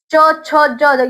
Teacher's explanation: च, छ, ज यहां पे तालु पे टच हो रहा होता है ऊपर।